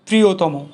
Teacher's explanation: শব্দের মধ্যে ও অন্তে স্বরধ্বনির সংবৃত উচ্চারণ পাওয়া যায়। যেমন তর, তম, তন প্রত্যয়যুক্ত বিশ্লেষণ পদের অন্তে স্বর অধ্বনির উচ্চারণ সংবৃত হয়